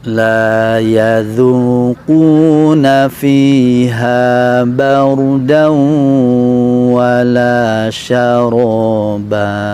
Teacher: ada bacaan mendengung ya, dibunyi tanwin yang dileburkan ke huruf waw.